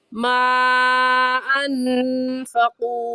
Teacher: हुरूफ़े मद्दा के बाद हमज़ा अगले कलमे में आ जाए तो उस मद का नाम मद्दे मुनफ़सिल और मद्दे जायज़ होता है और इस मद को हम 3 अलिफ की मिकदार खींचेंगे, इससे कम या ज़्यादा नहीं खींचेंगे।